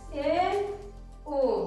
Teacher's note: Close means बंद होता है, तो हमारे मुख का द्वार उन स्वरों का उच्चारण करते समय जिसमें आधा बंद रहे, उन्हें अर्धसमृद्ध स्वर कहते हैं। और ये है ए, ओ।